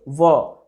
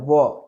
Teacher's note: और दंत्योष्ठ यानी दंत प्लस ओठ मिला करके आपका व का उच्चारण होता है